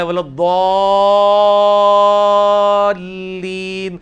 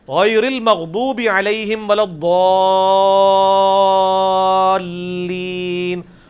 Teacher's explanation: تو ولضالین میں جو الف کے اوپر بڑی والی مد ہے وہ 5 الف تک کھینچی جاتی ہے, یعنی 10 حرکات کی لینتھ کے برابر. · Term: مد واجب